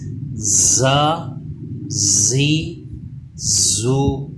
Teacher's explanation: زبان دانتوں سے پیچھے رہتی ہے، تھوڑا اس کو دبا کے پڑھتے ہیں، اس پہ سیٹی کی آواز پیدا ہونی چاہیے۔